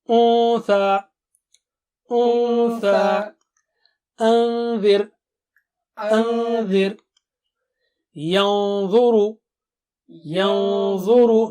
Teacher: Noon Sakina will be thick because dha is thick. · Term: hide the sound